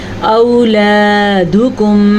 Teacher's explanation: ولا اولادکم، مد کا دھیان رکھنا آپ نے. او حمزہ زبر و او، اس کو لمبا نہیں کرتے ہیں، اسے لین کہتے ہیں